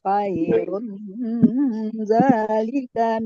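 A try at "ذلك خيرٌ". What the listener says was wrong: Nah, Bu perhatikan kalau itu terus khairun itu jangan harus nampak gunahnya ya, Bu. Zalika khairun. Jangan khairun. Khairun berarti namanya izhar. Ini namanya ikhfa, ya.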